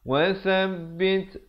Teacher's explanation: Amrina sa di hujung lidah. Wasabbit, bunyi hamaskan pada ta ni, bunyi angin